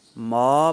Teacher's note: تو ناک کے بانسے میں آواز نہیں لے جانا